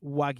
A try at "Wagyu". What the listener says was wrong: Like that Wagyu. Only 2 syllables.